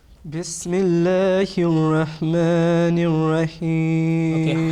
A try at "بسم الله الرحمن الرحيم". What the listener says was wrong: Okay, ha should be sharp. Okay, that should not be blunt. Ha is coming from the middle of throat, and you have to practice that one.